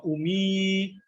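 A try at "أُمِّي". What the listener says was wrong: ummi. Ini ada tasdidnya, Pak.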